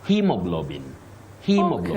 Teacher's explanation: So you say he with a long high front sound, E.